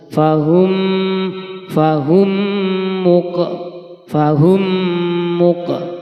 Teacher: Mim sukun yang bertemu dengan huruf mim. Maka harus dibaca diidghamkan. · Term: idgham mimi